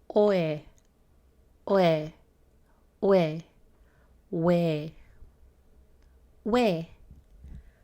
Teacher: this is O and a but it's not o o but we want to Mush the sound together slowly we'll start to hear that W sound o we we you can think of this sound like we